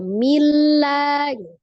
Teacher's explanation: Tanwin ketemu dengan lam berarti hukumnya idgham bila gunnah, dilebur atau ditasdidkan dengan tidak didengungkan gitu ya. Jadi tidak didengungkan, ditasdid saja milla.